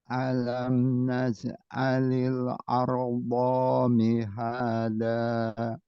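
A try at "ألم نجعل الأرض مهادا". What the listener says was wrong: Doanya tipis apa? Satu harokat pendek. Pendekin lagi doanya. Masih panjang ya doanya. Ardo dengan ardomi itu beda.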